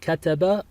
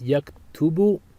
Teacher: note the change in the middle vowel from fatha to a dhamma.